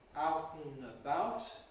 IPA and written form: ˈaʊt n̩ əˈbaʊt (out and about)